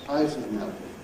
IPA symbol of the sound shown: əz